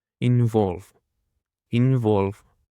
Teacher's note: Involve has 2 syllables and the stress is on the second syllable.